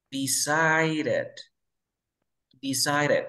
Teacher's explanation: Aquí tengo una D entre dos sonidos de vocales, ¿cierto? Entonces aquí pronuncio como R